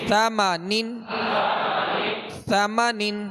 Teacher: जबान का सिरा और ऊपर के जो सामने वाले दो दांत हैं इसके अंदरूनी किनारे से लगे तो सा अदा होता है